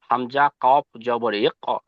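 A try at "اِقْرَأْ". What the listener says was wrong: জবর নেই, জের আছে, জের আছে, মিস্টেক হয়ে যাচ্ছে।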